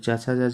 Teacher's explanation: चा वर्ग की जो ध्वनियों का उच्चारण स्थान है उसको तालव्य बोला जाता है